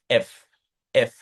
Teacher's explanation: আপনার উপরের যে দাঁত উপরের পার্টির দাঁতটা হচ্ছে আপনার নিচের ঠোঁটকে হালকা কামড় দিয়ে আপনাকে বাতাস বের করে দিতে হবে। এফ এফ এইরকম। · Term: লেভিওডেন্টাল সাউন্ড